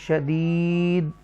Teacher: یا مدہ ہے. تھوڑا سا اس کو کھینچیں گے اسٹریچ کریں گے